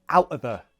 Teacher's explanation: glottal t is an option